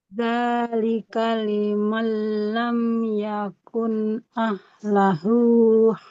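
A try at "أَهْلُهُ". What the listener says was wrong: Ahluhu, bukan ahlahu. Ahluhu, lamnya dhamma. Dzalika liman lam yakun ahluhu, bukan ahlahu ya. Ahluhu hadiril masjidil haram.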